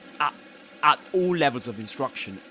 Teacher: And in that case you get glottal reinforcement because at the beginning he begins with a glottal stop and then at the end you got glottal replacement because instead of saying at at he says ah at all levels of instruction all again.